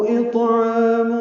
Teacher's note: عین وسط حلق سے ادا کریں گے ، 2 حرکات لمبا کریں گے، تنوین کے بعد فا آنے